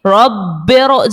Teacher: तो इस सूरत में भी रॉ को मोटा ही पढ़ेंगे. रॉ साकिन से पहले जेर दूसरे कलमे में हो तब भी रॉ को मोटा पढ़ेंगे